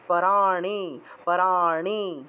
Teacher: মূর্ধন্যের উচ্চারণটা হলো জিহ্বা উল্টিয়ে ন উচ্চারণ